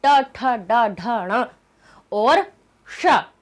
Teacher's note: क्यों होता है, क्योंकि इनका ता वर्ग का ट ठ ड ढ ण और श इनका उच्चारण स्थान एक ही होता है। ये सभी मूर्धा से निकलते हैं।